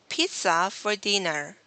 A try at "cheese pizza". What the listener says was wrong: Cheese pizza. My suggestion here, because I heard a breath like cheese pizza, and it creates the z sound in the middle of cheese and pizza. let's remove that. Cheese pizza. So that would remove like the tail sound after cheese. if you would breathe, it's going to sound like cheese. Cheese pizza.